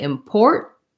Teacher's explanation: put your tongue up for where the t is but don't let any t sound out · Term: stop this first tea